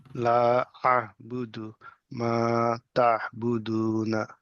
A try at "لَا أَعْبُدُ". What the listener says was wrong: সামনে আলিফ থাকলে কি হয়? টান হবে না?